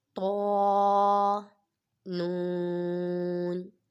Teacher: یہ طا بھی پر پڑھا جائے گا، حروف مستعلیہ میں سے ہے